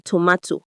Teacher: it's your tongue tapping the ridge right behind your teeth. That's alviola like the T in tomato. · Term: alveolar